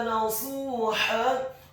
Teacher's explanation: huruf ha-nya dibaca tipis, tarqiq, nyaring dan halus fathah 2 harokat karena setelahnya ada alif · Taubatan nasuha, kata nasuha, huruf nunnya ditasydidkan fathah 1 harokat